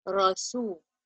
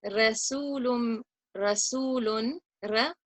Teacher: The Ra has a zabar or a fatha above it. I'm going to lift up my tongue and recite heavy way with a full mouth. Rasul. If I said Rasulun, Rasulun, Ra, it would be incorrect. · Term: tafkhim